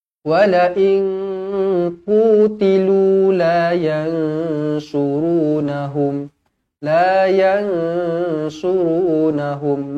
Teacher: Nun kosong bertemu dengan kaaf Ikhfa Hakiki dengung dua harakat